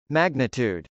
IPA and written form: mˈægnət.ud (magnitude)